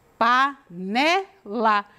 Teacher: então o né é a sílaba tônica